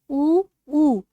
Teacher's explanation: ओठों का प्रयोग हो रहा है। तो यह कौन से हैं? ओष्ठय हैं।